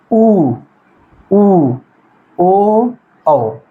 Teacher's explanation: अगर यहीं पे पश्च स्वर की बात किया जाए तो पश्च स्वर का मतलब ये अंदर जीभ का अंदर वाला भाग जो है उसके माध्यम से इसका उच्चारण होता है